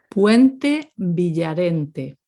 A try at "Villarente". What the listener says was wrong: Again, that V, Villarente.